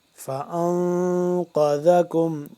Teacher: ان، فان، قاف موٹا ہے، قاف زبر قا، ذال زبر ذا، نون ساکن پہ ہم اخفا کریں گے اور قاف کو موٹا کر کے ذال کو نرمی سے پڑھیں گے ، زا سے جدا کر کے، ذال زبر ذا، زبان کی